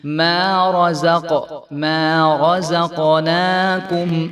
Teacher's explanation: قاف کیونکہ ساکن ہے تو یہ حروف کلکلہ میں سے ہے، تو یہاں پہ کلکلہ کر کے پڑھیں گے ہم